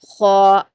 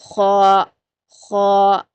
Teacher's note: جو خا کا مخرج ہے وہ آپ کا جو سافٹ پیلٹ ہوتا ہے، یعنی حلق کا اوپری حصہ، وہاں سے ادا ہوتا ہے